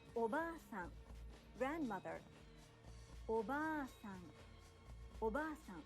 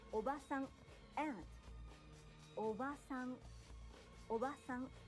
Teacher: Japanese learners often shorten the long vowel in ba and say oba-san, meaning aunt, not grandmother. In this case, not only is the pronunciation incorrect, but by shortening the vowel, you change the meaning of the word.